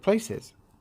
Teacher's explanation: the first syllable is strong the second one is weak